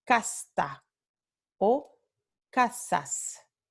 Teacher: la consonante S, la fricativa alveolar sorda, en posición final de sílaba o final del enunciado, utterance, en México y en los Andes se mantiene